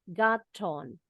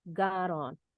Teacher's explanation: the T sounds like a quick D. Bunyinya seperti D cepat.